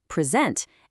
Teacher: shift that stress over to the second syllable, present, and now it's a verb, meaning to give something.